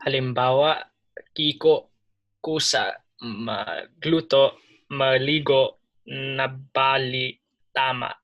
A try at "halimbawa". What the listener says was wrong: Very good. Perfect.